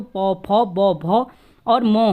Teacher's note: ओष्ठ ध्वनि का मतलब है ओंठों की सहायता से बोले जाने वाले होते हैं